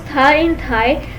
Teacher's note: Tha is a dental belonging to type interdental. It is a fricative because it is pronounced by the tip of the tongue coming between the teeth. It is a fricative, so the air flows out with friction.